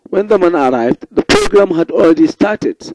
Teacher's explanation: the beginning of the sentence is in falling tone while the end ends with rising tone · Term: falling and rising tone